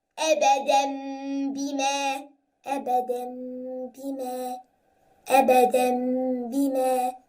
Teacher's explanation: So this is iqlab, and you must stretch the sound twice.